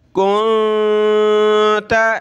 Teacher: نون ساکن ہے اخفا کریں گے، ناک میں آواز پیدا کریں گے. کنت علیہا مد کریں گے علیہا الا یہ حرف پر تشدید ہے تو سخت کریں گے.